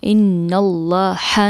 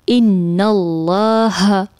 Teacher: آخر میں ہا ہے تو ہم اس کو اقصی حلق سے ادا کریں گے، نہ کہ ہم ان اللہ ہا نہیں پڑھیں گے بلکہ ان اللہ.